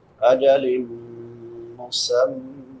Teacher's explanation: لام پہ نون تنوین ہے، بعد میں حروف یرملون میں سے میم ہے تو ادغام مع الغنہ ہوگا. میم مشدد ہے آگے، وہاں پہ بھی غنہ ہوگا.